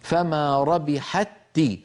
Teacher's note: فما ربحت، هنا التقى في اللفظ تاءان، فالأولى ساكنة والثانية متحركة فأدغمنا التاء في التاء